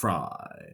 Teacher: putting in a bit of vocal fry uh when you uh said the word fry